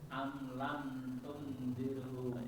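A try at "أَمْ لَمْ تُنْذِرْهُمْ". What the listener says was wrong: Ya, tungnya udah benar, tinggal ditahannya lagi ya, Pak. Tunzirhum. Tunzirhum.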